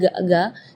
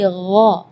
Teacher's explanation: kalau ga itu dia makhrajnya dari lidah. Ya, tapi kalau huruf ghain itu dari bagian tenggorokan ya.